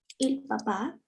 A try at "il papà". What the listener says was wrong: Il papà. Exacto. Il papà.